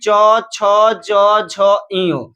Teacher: च वर्ग यानी च छ ज झ इयो, पूरे च छ ज झ इयो का जो उच्चारण स्थान होगा वह तालु होगा